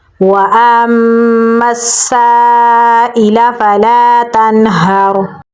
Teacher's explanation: ता को नून के साथ मिलाएंगे क्योंकि नून के ऊपर जज़म है। नून साकिन के बाद हरूफ हल्की में से हा है तो नून को हम ज़ाहिर करके पढ़ेंगे। हा को गले के निचले हिस्से से निकालेंगे और रा के साथ मिलाएंगे।